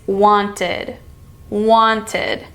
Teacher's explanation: this is the ID sound because the root word want ends in t